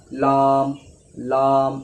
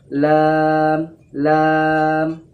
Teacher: তবুও যে ভুলটা করে থাকে সেটা হচ্ছে এটা যে লামকে মোটাভাবে পড়ে এমনিভাবে লাম লাম এমনি মোটাভাবে পড়ে তো লামকে মোটাভাবে অর্থাৎ পুরভাবে পড়বেন না বারিকভাবে পড়বেন